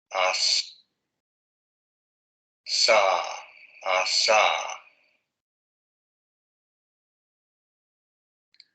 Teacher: A esta parte de los alvéolos que aparecen aquí. La lengua sube, ahí es donde se produce la fricación y no hay vibración de cuerdas vocales. As. Sa, sa. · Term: alveolar fricativo sordo